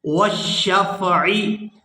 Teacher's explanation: عین کو حلق سے اچھی طرح سے ادا کریں گے۔